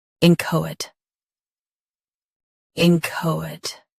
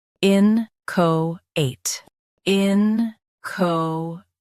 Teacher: US ends with it. UK ends with ite. Don't say it in UK.